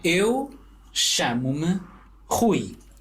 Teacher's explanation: the R, at least at the beginning, is more of an aspiration or an H to me. That's what it sounds like.